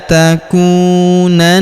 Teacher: Huruf na kita tahan dan kita tekan karena terdapat tanda tasdid di atasnya serta kita dengungkan dua sampai harakat ya.